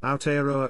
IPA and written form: aɔˈtɛaɾɔa (Aotearoa)